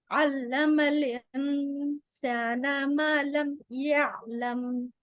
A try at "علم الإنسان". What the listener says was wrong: आपका हमजा की आवाज नहीं, علم الانسان